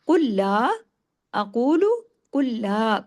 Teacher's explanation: कुल्ला काफ हैवी लाम को तशदीद के साथ है। सख्ती से जोड़ना है। · کاف ہیوی، لام کو تشدید کے ساتھ ہے، سختی سے جوڑنا ہے